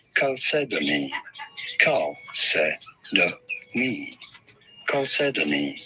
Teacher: You do want to stress on the second syllable, the se.